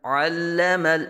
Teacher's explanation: حلق کے درمیان سے اس کی آواز ہے، تکلف کے ساتھ عین کو ظاہر کریں گے۔